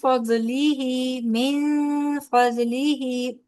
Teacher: نون ساکن کے بعد فا آ رہا ہے نا تو اخفا ہوگا یہاں پہ